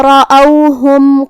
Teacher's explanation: آخر میں یہاں میم ساکن ہے، یہاں بھی حکم ہے اظہار شفوی، ہم میم کو ظاہر کریں گے اور بغیر غنہ سے حکم کو ادا کریں گے · کلمت رأوہم میں یہاں حرف الراء ہے اور اس پہ زبر ہے، تو یہاں راء کا حکم ہے تفخیم، ہمیں اسے بھاری آواز میں پڑھنا ہے